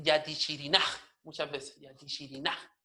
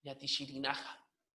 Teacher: Va a haber una caída vocálica en la última A